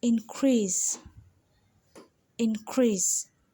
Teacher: increase you see how i stress more on the in while when it's a verb the crease in increase is stress more